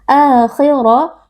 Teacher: huruf ro sama-sama huruf tafkhim atau huruf tebal dibaca dengan mengangkat pangkal lidah